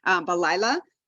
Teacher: the hay doesn't have a vowel so we don't hear it